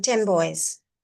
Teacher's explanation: So if it is N the sound changes to M